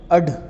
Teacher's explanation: तो अपन ऐसे तुम जब भी बोलो ना कि अड, तो इसमें जीभ अपनी ऊपर से नीचे गिरती है, फेंकती है अपने आप को, तो इसे अपन उच्छिप्त व्यंजन बोलते हैं।